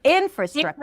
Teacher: In is the primary stress. If you were to say fra, then it would sounded like infrastructure, right?